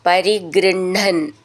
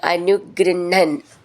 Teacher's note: ഹ് എന്നാണ് എഴുതിയിട്ടുണ്ടാവുക, പക്ഷെ നമ്മൾ ഉച്ചരിക്കേണ്ട ണ ഹ എന്നാണ്